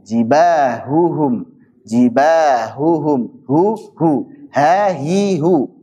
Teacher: Imam As-Sakhawi mengatakan wal ha'u takhfa, dan ha itu punya sifat khafa, dia samar.